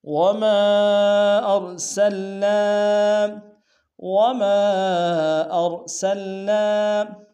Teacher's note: منفصل ہے، کم سے کم 2 الف امتداد میں کھینچیں گے، حمزہ کو را کے سامنے لائیں گے، را کو موٹا ادا کریں گے